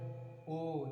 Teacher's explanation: अब देख लीजिए ए हमारे कंठ और तालु, ए कंठ तालु, ओ कंठोष्ठ है, ओ देखिए हमारा ओष्ठ और हमारे कंठ से भी आवाज मतलब हवा निकल रही है, इसीलिए हम क्या कहेंगे इसको, कंठ ओष्ठ।